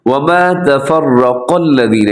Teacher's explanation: اس میں را بھی موٹا ہے، قاف بھی اپنے موٹا پڑھنا ہے